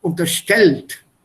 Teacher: Stress the second syllable.